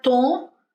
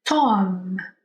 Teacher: se eu pronunciar Tom, em inglês, os meus lábios encostam, porque terminou com M. Tom. Em inglês, o M, você tem que fazer esse movimento aqui para fazer o som do M.